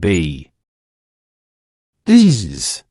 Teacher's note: You should feel a clear vibration or buzzing under your fingertips. That is a voice sound. Your vocal cords are activated and vibrating. This is the fundamental difference.